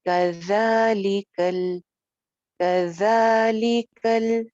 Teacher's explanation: जाल बगैर सीटी के है, ऊपर वाले दो दांतों के किनारे से